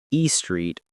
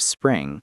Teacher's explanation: Adding a vowel between consonants saying e street or suping instead of spring.